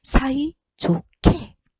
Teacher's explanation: 히읗 다음에 기역이 결합될 때 두 개가 합쳐져서 거센 소리로 변합니다.